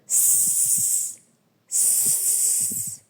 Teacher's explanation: Він не може співати як голосний, тому що при його вимові перешкоду утворюють губи, зуби і язичок. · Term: приголосний звук